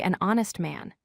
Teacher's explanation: honest starts with H, which is silent, so we say an honest man